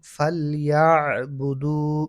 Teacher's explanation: আইনও কণ্ঠনালীর মাঝখান থেকে উচ্চারিত হয়